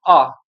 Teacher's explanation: तो जैसे हम बोल के देखते हैं आ, तो हमें लग रहा है भाई कंठ से ही कुछ ध्वनि, मतलब कंठ से कुछ एयर निकल रही है, यानी प्राणवायु कंठ के माध्यम से बाहर निकल रही है और इसमें कुछ ज्यादा खास अवरोध भी उत्पन्न नहीं हो रहा